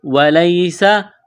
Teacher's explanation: یا ساکن سے پہلے زبر ہے، یہ حروف لین یا ہے، حروف لین کو نرمی کے ساتھ بغیر کھینچ کے پڑھا جاتا ہے